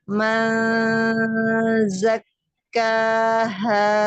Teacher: Ketika nun bertemu zai manza tiga ketukan